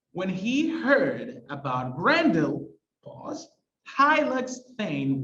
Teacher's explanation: a pause that divides the line with each part having two stresses so we have a line with four stresses but there's there